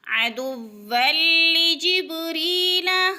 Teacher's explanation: جبری پہ یا مدہ ہے، یا ساکن سے پہلے را کے نیچے زیر ہے تو یا مدہ کو ایک الف کے برابر کھینچ کر پڑھنا ہے، اور را کو باریک پڑھا جائے گا، اس لیے کہ را کے نیچے جب زیر آ جائے اللہ یا را کے نیچے تو اللہ اور را باریک پڑھا جاتا ہے۔